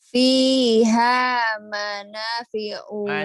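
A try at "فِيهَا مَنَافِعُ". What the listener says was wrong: Mana panjang. Fiha mana.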